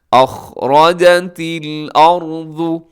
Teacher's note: اس میں خا منہ بھر کے پڑیے گا موٹا